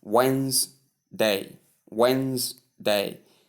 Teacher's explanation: the stress occurs on the first syllable. · The silent D, the D is silent, of course.